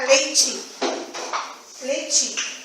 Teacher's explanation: A não realização do EI se relaciona com a consoante palatal seguinte. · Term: monotonga o ditongo EI